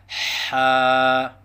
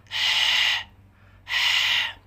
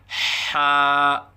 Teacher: مخرج حا وسط حلق سے ادا ہوتا ہے، یعنی حلق کے درمیان سے حا ادا ہوتا ہے